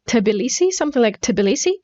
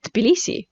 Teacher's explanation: with an extra sound like a schwa